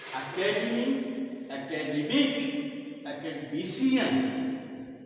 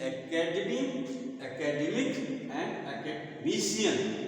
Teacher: it is stress on the second syllable, and here this is stress on the third syllable, and it is on fourth syllable